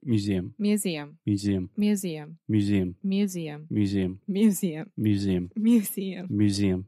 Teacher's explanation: you don't have to put a stress on the MU